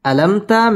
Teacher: মিম সাকিন ইজহারে খাস গুন্না ছাড়া পড়তে হবে